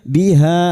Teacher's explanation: yminu biha nun diikuti wau sukun dua harakat mad thabi'i biha ha fathah diikuti alif dua harakat kita panjangkan